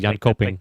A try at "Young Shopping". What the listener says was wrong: The K is like a CH sound, like Young Shopping. At least Google Translate said that.